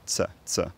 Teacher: I've previously transcribed Scouse t as a t that releases into a s, an alveolar sibilant, ts, ts.